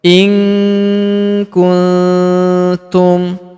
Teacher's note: Huruf nun sukun bertemu huruf ku, maka nun sukunnya melebur ke huruf ku, kita baca dengung dan samar. Dengungnya kita tahan 2-3 harokat.